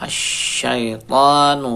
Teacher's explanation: shinnya at-tafasyih menyebar udaranya